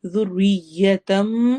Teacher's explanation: ذال کو نرمی سے پڑھنا ہے، ذریتم اقلاب ہو رہا ہے، تنوین کے بعد با آ رہا ہے تو ہم نون کی آواز کو میم سے بدل کے پڑھیں گے